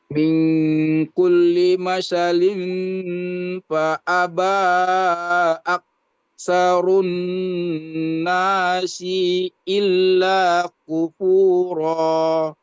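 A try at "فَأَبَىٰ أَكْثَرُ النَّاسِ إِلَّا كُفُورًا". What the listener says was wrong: Fa'aba aktsarun nasi, sinya pendek. Nah, fa'aba kita menggunakan yang 4 harokat. Fa'aba, ya, mad jaiz munfasil.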